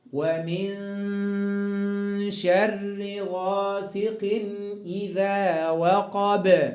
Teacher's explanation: غاسق إذا تنوين بالكسر بعده الهمزة إظهار حلقي